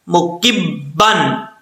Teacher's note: کاف کے بعد جو با آ رہا ہے یہ با مشدد ہے، پہلے کاف کو با سے ملائیں گے